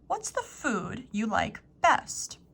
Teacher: Here I would stress food and best.